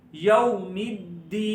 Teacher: ایک الف جتنا لمبا کریں گے، دال زیر یا دی، یومدی، یہاں پر واو لین ہو رہا ہے، واو لین کو ہم نے پڑھا نرمی سے پڑھنا ہے